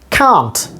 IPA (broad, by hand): kɑːnt